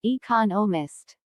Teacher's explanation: there are four syllables in economist with the stress on the second syllable